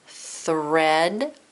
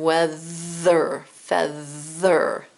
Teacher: So there's th unvoiced, like in thread, and voice like in weather, feather. When you get to that th, it kind of tickles and your tongue vibrates.